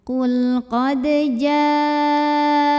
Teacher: Maka jimnya ini dipanjangkan boleh 4 boleh 5 harokat. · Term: mad wajib muttasil